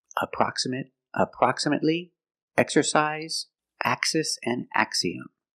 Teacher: All of these have an X between vowels that is pronounced with the voiceless x sound. So they all break the rule.